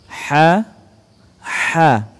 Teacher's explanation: keluar dari tengah tenggorokan dengan suara yang bersih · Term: huruf H